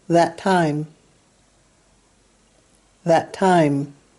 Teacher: When you say the words that time, well, they share a T, and you link that sound together, that time.